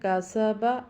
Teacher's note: کاف پڑی زبر کا، سین پڑی زبر سا، کاسا، با پڑی زبر با، کاسا با، آگے وقت کا سب، چونکہ آخری حرف کو ہم ساکن کرتے ہیں وقف میں، اور وہ با ہے، اور با حروف قلقلہ میں سے ہے۔ جب با کو ساکن کریں گے تو اس کو قلقلہ کریں گے، یعنی اس کو تھوڑا سا ہلائیں گے، اور ہلائیں گے میں نے آپ کو بتایا یہ اسی طرح سے آواز پلٹ کر جاتی ہے جیسے گیند واپس جا کے اپنے مخرج سے لگتی ہے۔